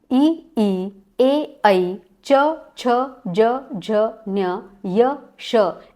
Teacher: ई ए ऐ च छ ज झ न्य य श, इनका उच्चारण स्थान है तालव्य